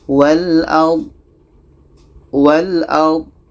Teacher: Itu salah. Karena do ini bukan qalqalah, tidak ada pantulan